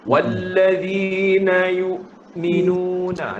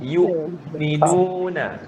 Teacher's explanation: Kenapa putus? Sebab hamzah adalah huruf syiddah.